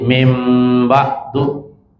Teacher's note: ketika nun mati ketemu dengan ba, maka dia punya hak untuk suara nun tadi dibalik menjadi suara mim